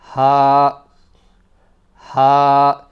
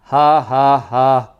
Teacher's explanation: It's right from the bottom of the throat or the chest, you could say, and it's quite a deep sound.